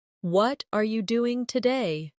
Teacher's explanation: The stress usually falls on what and doing.